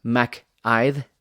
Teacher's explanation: there's kind of like a soft TH sound there at the very end of that